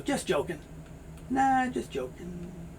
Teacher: very often a t sound is not made and the g sound is not made